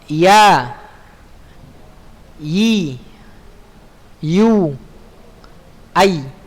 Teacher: Yang terakhir al-akhir ya, itu huruf ya. Huruf ya itu lidah bagian tengah pada posisi langit-langit bagian atas ya.